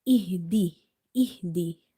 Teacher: this ha is from the bottom of the throat and it's simple